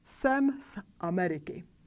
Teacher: Because the vocal cords don't vibrate when we pronounce the vowel A in Ameriky, we don't want the vocal cords to vibrate when we pronounce the sound in front of it. Therefore, we pronounce the voiceless pair S instead of Z.